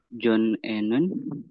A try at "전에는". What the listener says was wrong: nah, dibacanya jangan John Ennon ya. Nyambung.